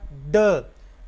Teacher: ड, ट की तरह ये भी है, ये भी पूरे एयर पैसेज को वक्ती तौर पे बंद करती है। एल्वियोलर है, यानी ऊपर वाले दांतों के नीचे वाले हिस्से को ज़ुबान टकराएगी। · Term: ड साउंड